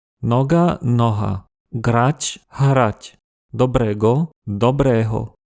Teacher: les ancêtres des Slovaques ont à un moment donné commencé à un peu moins articuler le son [ɡ] jusqu'à ce qu'il finisse par devenir [ɦ] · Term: correspondance régulière